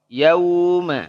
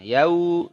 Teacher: Waw dari mana waw? Dari dua bibir yang dimonyongkan.